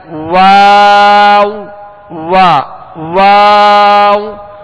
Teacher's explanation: واؤ کا مخرج ہے دونوں ہونٹوں کی گولائی، دونوں ہونٹوں کی گولائی